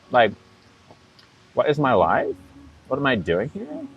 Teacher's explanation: with the valley girl accent, everything is kind of like a question